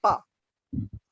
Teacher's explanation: ये प्लोसिव है, यानी रुकी और धमाके से निकली